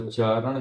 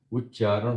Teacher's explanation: अभी त आया है। त को हम आधा च में बदल देंगे।